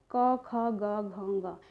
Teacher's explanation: का वर्ग में जो हो जाता है वो 5 वर्ण जो होते हैं वो कंठ वर्ण हो जाते हैं